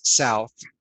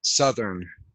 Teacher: so we really change that vowel sounds it's almost just just a plain u sound when we turn it from south to southern